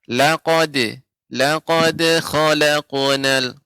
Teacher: untuk laqad itu dal ini tidak tebal, ya, maka pengucapannya laqad, laqad khalaqnal.